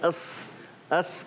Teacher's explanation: जबान की नोक और ऊपर नीचे दोनों दांतों के अंदरूनी किनारे से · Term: उर्फे असलिया